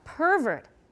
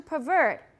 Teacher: if it's a noun the stress tends to be on the first syllable but in verbs on the last